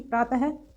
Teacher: जो विसर्ग का उच्चारण है वो कुछ हम ह की तरह करते हैं